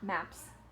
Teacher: Map ends with that voiceless p sound. So we continue with voiceless s sound.